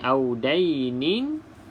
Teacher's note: Sebab di sini ada hukum mad bila mana kita wakaf. Kalau kita sambung wasal, barulah tidak ada hukum mad.